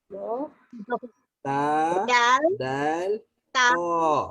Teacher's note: hujung lidah bertemu belakang gigi atas